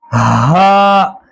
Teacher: गले के बिल्कुल आखिरी हिस्से से अदा किया जाएगा। हा, हमजा, दोनों हा भी और हमजा भी गले के आखिर से अदा किया जाएगा।